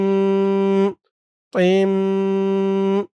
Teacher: এখানে গুন্না হবে। এই মিমের উপরে একটি তাসদিদ ছিল। তাসদিদ। ছাপায় হয়তো ভুল হয়েছে, তাসদিদটা ওঠেনি।